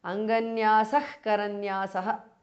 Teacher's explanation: Visarga changes to jihva mulya.